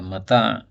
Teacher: Hasan Al-Qudsi bahwasanya mata' itu dari sisi makhrajnya sudah menunjukkan bahwa kesenangannya sementara. Karena makhrajnya mim itu pada bibir, kemudian ta pada lidah, ta ujung lidah, kemudian ain pada tenggorokan